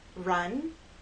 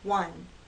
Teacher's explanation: with r you focus more on what's happening with your tongue with W the focus is on your lips